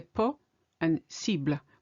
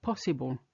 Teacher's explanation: we don't separate the ble from the end like you do in English in English you say possible this is a very good example